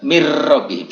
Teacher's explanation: Tapi harus baca mir rabbihim, seolah-olah tidak ada nun. Tulisannya min rabbihim, kita membacanya mir rabbihim, tidak ada nunnya